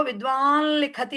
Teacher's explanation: అది నకారం పలక్కుండా పలకాలి ముక్కుతో విద్వాన్ లిఖతి అంటాం దాన్ని విద్వాన్ లిఖతి అని పలక్కుండా విద్వాన్ లిఖతి అని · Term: అనుస్వార లకారం